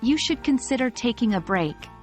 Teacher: stress the modal verb or the action you're suggesting for instance in the sentence you should consider taking a break the stress is on the verb consider